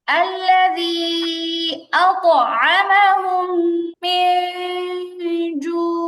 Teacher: আতআমাহুম এরপরে আবার কি নুন সাকিন আসছে, এখানে নুন সাকিন আসছে, নুন সাকিনের পরে জিম, এটা হচ্ছে ইকফার হরফ, কেমন? আর ইকফার হরফ কি করতে হয়? নাকে লুগায় পড়তে হয়, অনুস্বারের মতো গুন্না হয়। আর এই যে জিম আসলে গুন্নাটা পাতলা করে পড়তে হয়।